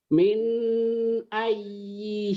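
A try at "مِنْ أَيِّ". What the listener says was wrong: Minnya jangan ditahan, idhar. Min ay, idhar jangan ditahan, dibaca apa adanya kayak dibentak. Min ay.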